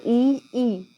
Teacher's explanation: जैसे ए आ बोल के देखो अभी। और ई तालव से, हमारे तालू के ऊपर लगती है जीभ